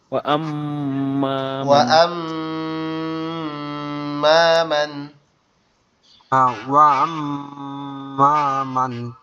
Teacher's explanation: ওয়া আম্মা মান, মানে ওই মিমটা ডবল উচ্চারণ হবে।